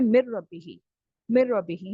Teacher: مر ربی کی اگزامپل دیکھیے. نون، نون جو تھا اس کو ہم نے رو میں اس طرح داخل کیا کہ اب نون کو پڑھیں گے ہی نہیں · ادغام تام کی ڈیفینیشن ہے، یعنی نون جو ہے وہ کمپلیٹلی مرج ہو چکا ہے رو میں، اسی لیے ہم پڑھتے ہیں مر ربی ہی. مر ربی ہی، یہاں پہ نون کا شائبہ تک نہیں ہے، ذرا سا بھی یہاں پہ شک بھی نہ ہو کہ نون کا گنہ آ رہا ہے